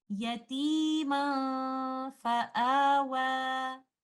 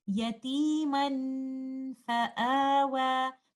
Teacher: While hiding the oral part of the noon sakinah by not touching the tip of the tongue with the roof of the mouth holding the ghunnah for some time and preparing our mouth for the makhraj of letter fa, we will give this ghunnah light because fa is a light letter · Because now I'm reciting the noon sakinah hidden in tanween clearly. I'm not hiding it. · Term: ikhfa, idhar of noon sakinah